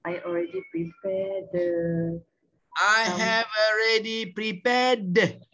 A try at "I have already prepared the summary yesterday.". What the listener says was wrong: Bukan the. Dia prepare tu ada D. I have already prepared.